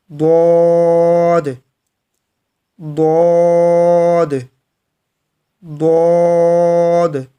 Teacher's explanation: تو میں آج آپ کو دعات کا ایک اور طریقہ کار بتاؤں گا کہ دعات کو آپ نے اپنی زبان کو کروٹ دے دینی ہے، اور تالو کا جو اوپر والا سخت حصہ ہے، زبان کو کروٹ دیتے ہوئے جو اوپر والی جو زبان کی لیر ہے، کنارہ ہے، اس کو سخت تالو کے حصے کے ساتھ لگانا ہے۔